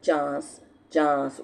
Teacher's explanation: नून को छुपा लिया अपनी नाक में, लेकिन ज़बान जो है वो पूरी तरह तालू के साथ नहीं लगती, ठीक है। चांस चांस ऊपर को उठती है लेकिन तालू के साथ नहीं जाती। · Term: इख्फा